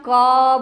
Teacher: क के साउंड में पीछे से आप ध्यान से सुनोगे अ का उच्चारण होता है. तो आप इस तरह से भी देखोगे क जोड़ अ, तभी आपका पूरा क बनता है.